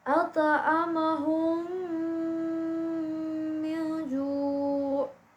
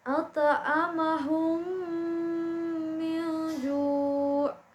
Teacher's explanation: jadi mimnya itu ditahan ya sepanjang 2 harokat atau 3 harokat. Jadi itu didengungkan ya. Nah, seperti itu cara membaca hukum idgham mimi.